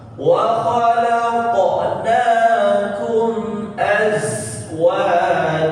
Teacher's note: dan bunyi hurufnya jelas za, bukan aja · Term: zai sukun